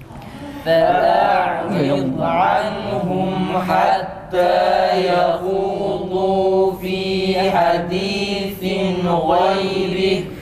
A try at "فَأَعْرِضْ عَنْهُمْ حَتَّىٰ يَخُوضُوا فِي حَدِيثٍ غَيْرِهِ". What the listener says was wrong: Ha'da ses yükselsin, ses canlı çıksın. Hatta yahudu, hatta yahudu. Ha'da dudak önde, mimde geride.